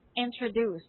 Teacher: So you have to pronounce letter D as letter T for the word introduced. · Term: T sound